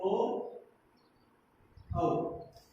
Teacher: और कंठोष्ठ से बोले जाते हैं ओ, औ